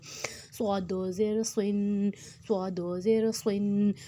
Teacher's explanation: صاد موٹا حروف ہے اور اس میں شروع میں سیٹی آئے گی اور اس کو موٹا کرنا ہے